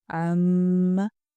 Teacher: جو میم کے اوپر شد ہوتی ہے اس کو بہت 2-3 سیکنڈ کے لیے اس کو لمبا بھی کیا جاتا ہے